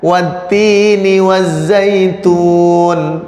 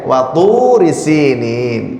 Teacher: Tapi begitu di sini ini to ya, waktu, nah gitu ya. Nah, karena makhrajnya ta dan to ini berdekatan, maka biasanya yang kedengeran jadinya sama, watu risinin, padahal di sini adalah to, waktu lebih tebel. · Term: makhraj yang berdekatan